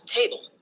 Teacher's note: the TA is the stress syllable and ble is the unstressed syllable